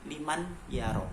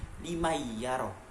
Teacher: Bacaan awalnya adalah liman yaro, tapi ketika di situ terdapat hukum idgham bi gunnah, maka liman yaro harus berubah menjadi limayyaro atau nunnya tidak dianggap. Itulah hukum bacaan idgham bi gunnah, yang awalnya liman yaro menjadi limayyaro.